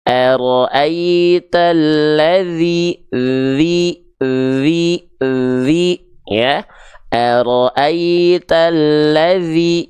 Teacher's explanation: ujung lidah disentuhkan ke ujung gigi sari atas secara tipis-tipis, alirkan suaranya. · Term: huruf dzal